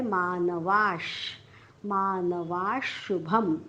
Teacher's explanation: वाच्या पुढे विसर्ग, विसर्गाच्या पुढे आलेला आहे श. विसर्गाच्या पुढे जेव्हा श येतो तेव्हा विसर्गाचा उच्चार आपण हलंत श करतो